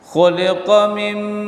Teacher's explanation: nun mati jumpa dengan mim, idgham bi gunnah atau ma'a gunnah, dengung. Mim, tahan mimnya.